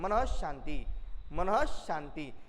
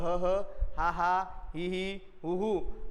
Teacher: विसर्गाचा उच्चार होत असताना स्वरांच्या उच्चारानंतर हा हा ही ही हु हु सारखा उच्चार होताना हवेचे किंचित विसर्जन होते